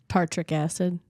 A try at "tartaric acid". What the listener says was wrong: No, it's just tar twice. Tartaric acid.